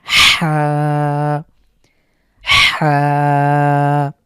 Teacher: ঠিক অনেকটা এরকম। হা কন্ঠের মাঝখান থেকে হলকের মাঝখান থেকে বা কন্ঠনালীর মাঝখান থেকে চাপ দিয়ে এভাবে উচ্চারণ করতে হবে। · এই বর্ণটি আমাদের হলক বা আমাদের কণ্ঠনালীর ঠিক মাঝখান থেকে উচ্চারিত হবে। একটু চাপ পড়বে এবং আপনি যদি গলায় হাত দেন তাহলে বুঝতে পারবেন যে গলার ঠিক মাঝখানে চাপ পড়ছে।